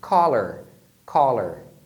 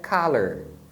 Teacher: faz um som de Ah não é arredondado ele é mais aberto